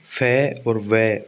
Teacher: याद रखना lower lip upper teeth याद रखना सीधा ही लेबियोडेंटल लोअर लिप अपर टीथ याद रखना जब निचला होठ ऊपर वाले दांतों से लगे और हवा रोक कर बोले · आपका जब नीचे वाला होठ आपके ऊपर वाले दांतों से मिले और हवा थोड़ी सी रुक जाए तो वही जो साउंड निकलते हैं उसको लेबियोडेंटल बोलते हैं